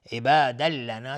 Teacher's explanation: تنوین بهش لام ادغام بدون غنه